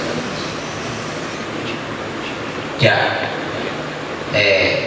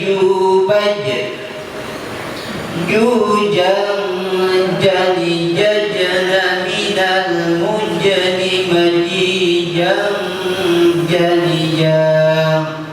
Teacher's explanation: bukan pangkal lidah, wastu lisan tengah lidah tempel ke dinding atas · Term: huruf jim